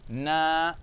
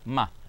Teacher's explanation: And then we have the letter Mim with a fatha, Na, Ma, short, Ma, Ma, short. The first one is long, Na, and then the next one is short, Ma